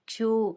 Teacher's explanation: క్షు అన్నప్పుడు కా ఇంకా షా కలిసిన సంయుక్తాక్షరం అన్నమాట, పొల్లుగా పలకాలి